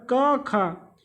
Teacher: क वर्ग वाले जितने भी है सभी कंठ से निकलती है। मतलब का हो गया, खा हो गया, ग हो गया, घा हो गया, अड़ा हो गया, ये सभी जो है ये सभी कंठ से निकलती है। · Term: कंठ ध्वनि